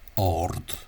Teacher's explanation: So for example, R, what would originally been ard, with a long D, became ard, and then because the A is in front of a strong R, a strong sonorant, not followed by a vowel, the vowel becomes long, and that's why it's pronounced as ord, as if there were a father, which you mistakenly see on road signs sometimes.